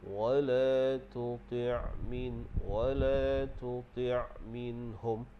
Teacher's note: Kemudian huruf ain kita dah tahu dah makhrajnya di tengah kerongkong. Jadi pastikan sebutan ain itu adalah keluar di tengah kerongkong.